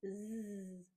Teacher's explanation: And the last letter is the letter Z, which makes the voiced sound Z. So mouth shape similar to the S sound, but this time it's voiced and we vibrate